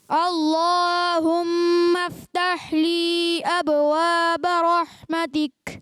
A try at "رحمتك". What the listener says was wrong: رحمتک میں ہا کی ادائیگی کلیئر کریں، رحمتک۔ ہا کی ادائیگی، رح رحمتک۔